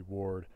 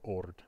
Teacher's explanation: that loss of W before a rounded vowel like you routinely see in Old Norse